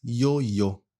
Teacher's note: É quase sem fricção, é um som suave. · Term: som suave de I